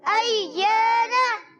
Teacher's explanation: یا الف زبر یا حرف مدہ ایک الف کھینچنا ہے, نون پر زبر ہے, اس کو کھینچیں گے نہیں